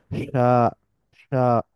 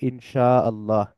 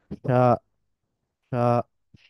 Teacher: জিহ্বার মধ্যভাগটা তালুকে স্পর্শ করে কিন্তু পুরোপুরি লেগে থাকে না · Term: শিনের উচ্চারণ